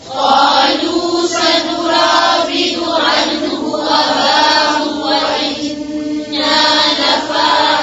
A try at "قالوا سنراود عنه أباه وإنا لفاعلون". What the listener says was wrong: पेश को लंबा नहीं खींचे, फिर से पढ़ें। قالوا سنراود عنه أباه सब जो पेश है इसको लंबा नहीं खींचे, फिर से पढ़ें।